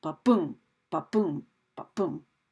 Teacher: that first syllable is unstressed and the second syllable is stressed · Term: iamb